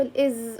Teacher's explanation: لو جربت تنطق الإز وحطيت ايدك على حنجرتك رح تلاحظ ان في عندك vibration الفوكال فولز وهو ال voiced sounds.